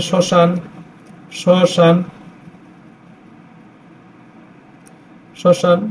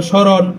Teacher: শব্দের শুরুতে ম ফলার উচ্চারণ হয় না